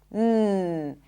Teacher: As you close the lips and the air comes out through the nose, m if you wrap your nose, you'll feel the vibrations. M and N as the tip of the tongue blocks the air inside the mouth and the air comes out through the nose